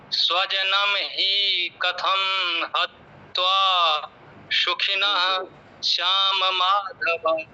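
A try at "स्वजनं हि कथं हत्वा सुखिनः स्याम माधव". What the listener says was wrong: स्वजनम ही इतना लंबा नहीं बोलना है, स्वजनम ही कथम हत्वा, स्वजनम ही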